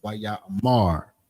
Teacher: So it's just sometimes you putting that more emphasis on that last syllable, which is the mar. Not necessarily ra, because the ma and the ra are connected. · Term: stress on the final syllable